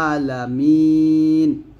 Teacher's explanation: আইন একটু চাপ দিয়ে বলতে হবে যেন হামজারের মত উচ্চারণ না হয়ে যায়